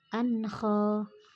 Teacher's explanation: Nidaan, itu ada mad bertemu hamzah dalam satu kata disebut mad wajib muttasil, panjangnya 4-5 harokat. Ankha, itu ada tanwin bertemu kha, dibaca jelas, maka hukum bacaannya izhar